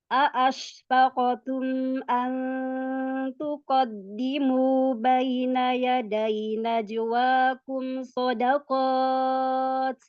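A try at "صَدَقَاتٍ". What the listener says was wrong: Sodakot. Qafnya, matnya tebalkan lagi. Qot. Iya, buka Sodaqot infitah.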